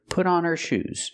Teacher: the H in her is silent